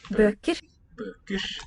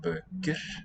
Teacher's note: we have devoicing of that final R and raising of the unstressed or the unaccented vowel